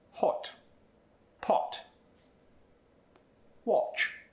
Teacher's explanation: For the short O, your lips move forward, they're rounded, and they close quickly.